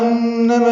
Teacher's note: انما میں نون مشدد پہ غنہ ہے